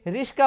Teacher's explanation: ক ধ্বনিটা যেখানে ছিল স ধ্বনিটা চলে আসলো তার আগে, আর ক ধ্বনির সঙ্গে আকার ছিল না, স এর সঙ্গে ছিল, সেটা কয়ের সঙ্গে যুক্ত হয়ে গেল। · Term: ধ্বনি বিপর্যয়